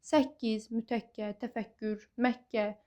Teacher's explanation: Qoşa K hərfi ilə yazılan sözlərdə tələffüz zamanı ikinci k g samiti kimi tələffüz olunur.